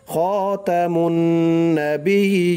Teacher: মুন মিম দিয়ে নুন ধরবে, ওয়াজিব গুন্নাহ করতে হবে, খাতামুন নাবিয়্যিন, তিন আলিফ টান দিয়ে অক্ফ করতে হবে, অর্থাৎ শেষ করতে হবে, খাতামুন নাবিয়্যিন।